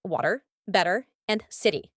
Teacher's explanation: the flap T in American English the T sounds like a soft D in words like water better and City